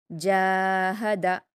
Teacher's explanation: جیم پر الف مدہ ہے، اس کو 2 حرکات کھینچ کر پڑھیں گے.